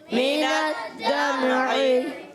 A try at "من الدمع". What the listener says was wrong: اچھا میم کو ہلانا نہیں.